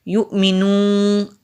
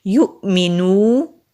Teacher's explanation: یہاں پر نون کی آواز اینڈ میں نہیں آئے، واو کی آواز ہی آئے گی